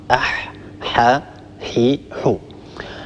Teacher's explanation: الحاء يخرج من وسط الحلق من منطقة لسان المزمار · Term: حرف الحاء